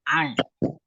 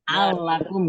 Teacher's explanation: iya, ain Ya, dari kerongkongan ya dengan tenggorokan agak disempitkan.